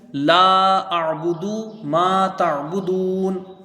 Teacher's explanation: لام کے ساتھ الف مدہ ہے، اس کو کھینچ کے پڑھیں گے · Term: مد منفصل